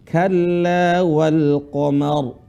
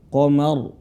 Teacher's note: jadi rnya dibaca tebal tebal atau disebut apa tafkhim dalam ilmu tajwid